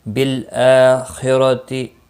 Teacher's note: بالآخرتی، خا مستعلیہ ہے، پر پڑا جائے گا، را زبر کی وجہ سے پر ہوگا اور گولتا وقف کی صورت میں ہا ساکن پڑھیں گے۔